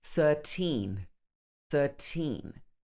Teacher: normally we would stress the teen